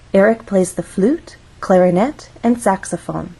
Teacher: we use rising intonation in each phrase until we get to the final item of the list so we're actually going to go up on flute then we'll go up again on clarinet this is our final item in the list so we're going · flute has one syllable so we only have one syllable to make our voice glide up